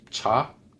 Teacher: le TCH fort, beaucoup de souffle, comme cha, qui veut dire voiture